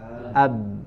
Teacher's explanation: Maka ketika sukun itu kita sedang berada di makhraj ba, ya, ab, ya, karena huruf ba diucapkan makhrajnya harus dengan menutup kedua bibir ketika sukun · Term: ba dengan sukun